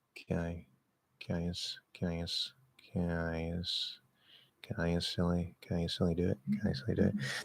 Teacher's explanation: partial nasal vowels with never closing into N so close together, can start to sound a little bit weird, a little maybe too nasally.